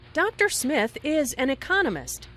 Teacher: notice the stress on Economist this content word has new information so it is emphasized